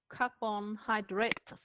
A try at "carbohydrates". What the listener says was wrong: no it's not carbon it's carbo carbo try again